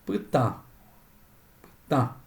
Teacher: Es una sílaba nasal y lleva el acento porque forma sílaba con una consonante oral.